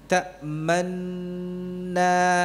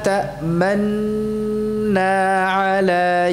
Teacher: Nun yang pertama disukunkan wa idghamiha fitaniah. Dan diidgamkan masukkan kepada nun yang kedua.